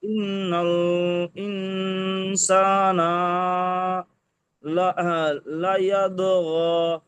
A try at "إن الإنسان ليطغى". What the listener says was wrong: এখানে দুটো ভুল গেল। সা না টান দিয়েছেন, টান হবে না, নুনের উপরে জাবার হারাকাত। আর লায়াত ও গ পড়েছেন, দাল পড়েছেন, এখানে ত আছে দেখেন, ইয়া তো জাবার ইয়াত, লায়াত তো গ। জি, লায়াত তো গ।